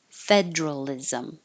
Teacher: this is one of the words where the middle syllable gets dropped and we make it just too Federal others with that same